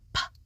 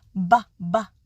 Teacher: the P sound p does not vibrate the vocal cords and the B sound BBB does vibrate the vocal cords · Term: voicing